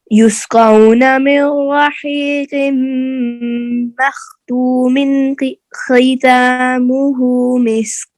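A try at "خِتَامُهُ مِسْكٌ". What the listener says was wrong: ख़ितामु, खी को लंबा नहीं करना. ख़ितामुहु मिस्क.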